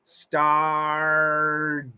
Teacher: Well, it's a flap T, so you got to get that. It's got to be fast.